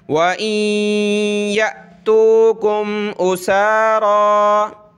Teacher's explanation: حمزہ ساکنہ کو پڑھتے وقت ہم نے جھٹکا دینا ہوتا ہے، یعنی یا حمزہ زبر یا، ٹھیک ہے.